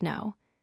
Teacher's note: the K is completely silent. You only pronounce the N sound. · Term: silent K